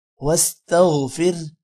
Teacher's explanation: غین بھی موٹا ہوگا، اور واستغفر کے اینڈ پہ آخر پہ آپ نے ہا کی آواز بھی نکلنی ہے